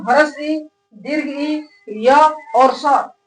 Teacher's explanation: ह्रस्व ई, दीर्घ ई, य और स इनका उच्चारण स्थान तालु है।